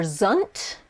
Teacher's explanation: which is a schwa vowel it's what we call a schwa it's this uh sound it's not ah but it's uh